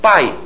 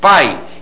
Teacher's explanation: O som de I, representado pela letra I, o som de I, eu vou dizer que é uma semivogal, é um som mais fraquinho. Então, ó, na palavra pai, eu tenho a junção da vogal A e da semivogal I. Sai tudo junto, né? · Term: ditongo